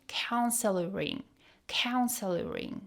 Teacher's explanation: the L at the end of council smoothly connects to hearing. Council hearing sounds like counseloring.